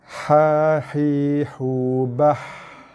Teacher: Dengar bunyi angin, hembusan nafas yang keluar. Ha adalah huruf yang paling, antara huruf yang paling banyak keluar hembusan nafas. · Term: huruf ha